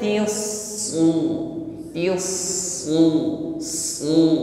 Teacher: Maka yang nampak pertama kali adalah sifat sofirnya, tius, ya bunyi desisnya memanjang. Setelah itu tebalkan pengucapan rasul bida tiusu tiusu su.